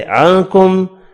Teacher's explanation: نون کا اخفا ہوگا اور میم مشدد پر غنہ کریں گے